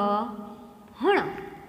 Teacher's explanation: હણ બોલો ત્યારે નાક અને મુખ બંનેમાંથી જીભ હવા બહાર નીકળે છે અને હણ બોલતી વખતે જીભ છે ક્યાં અડે છે? તો કે મૂર્ધન્ય પેઢા તરફ વળે છે.